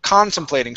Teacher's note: Stress is at the beginning.